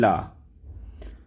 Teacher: जिन व्यंजनों के उच्चारण में जीभ श्वास वायु के मार्ग में खड़ी हो जाती है और श्वास वायु बगल में प्रवाह से जाती है उसे पार्श्व व्यंजन कहते हैं।